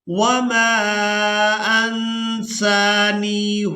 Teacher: سین کو کھڑی زبر کی وجہ سے اور نون کو یائے مدہ کی وجہ سے کھینچ کر ادا کرنا ہے. انسانیہ نون ساکن پر اخفا کریں گے یعنی نون کی آواز کو ناک میں چھپا کر ادا کریں گے.